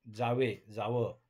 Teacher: शब्दाच्या शेवटी असलेला वर्ण गाळला जाणे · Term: अंत्य स्वरलोप